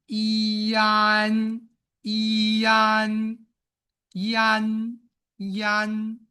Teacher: because e is a very high vowel and a is a very low vowel. So in normal speech the a is affected by e